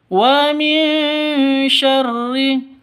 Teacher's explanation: nun mati bertemu dengan shin, syamar dengung ya, didengungkan, siap-siap ke huruf shinnya. Wa min syarri, karena ini ikhfa hakiki.